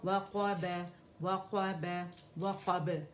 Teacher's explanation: اور یہ جو ہونٹ نا اس کو گول نہیں کرنا قو کی آواز نہیں آنی چاہیے